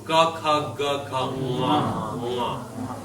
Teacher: This is nga in the back of the throat, where ga is.